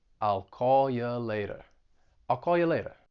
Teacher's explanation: I'm reducing you to ya, and then I'm dropping that R in later